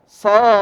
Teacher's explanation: Jadi dibaca sa-nya dulu panjang 6 harokat. Ya, karena dia termasuk mad al-lazim dan ini disepakati oleh para ulama.